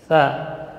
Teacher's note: Tapi karena di sini huruf mad, maka keluarnya dari al-jawf. Tha huruf hamas dan rakhawah. Ujung lidah di ujung gigi seri atas. Tha. Jadi mengalir udara dan suara.